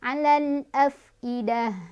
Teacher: Cara bacanya alif lamnya dibaca jelas. Alal, fa-nya punya sifat hamas, jadi ada udara keluar ya.